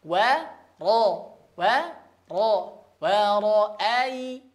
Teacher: Wa terbuka dan tipis. Ro berharokat fathah terbuka ya, tidak monyong, bacanya tebal atau hurufnya tebal. Wa ra'ai. Nah, huruf a ya atau hamzah jelas pengucapannya.